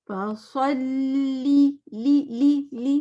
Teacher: سو فصلی اور لام جما کے پڑھنا ہے. کہاں جمانا ہے؟ دانتوں کے بالکل پیچھے, زبان ٹپ آف دا ٹنگ جو ہے بالکل زبان کے پیچھے 8 دانتوں پہ لگے گی, اتنا جمانا پڑتا ہے اس کو.